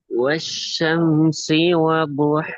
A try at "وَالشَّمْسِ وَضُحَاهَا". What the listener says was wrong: இதுல ரெண்டு ரெண்டு பிழைக்குது. ஒன்று ஹேக்கும் பெரிய ஹேக்கும் வித்தியாசம் போதாது, ஷீனுக்கும் சீனுக்கும் வேறுபாடு போதாது.